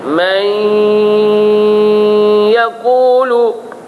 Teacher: Huruf ya itu tidak ada sabdu, maka naklah diberikan dia dengan dengung.